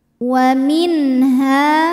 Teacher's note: Sebab nun sukun menghadapi huruf halqi atau huruf tenggorokan yaitu ha. Maka bunyi nunnya jelas. Tidak perlu ditahan bunyinya n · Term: izhar halqi